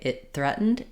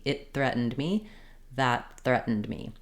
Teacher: If I say it threatened, you can see that my tongue already comes to the TH position as I'm stopping the air for the T.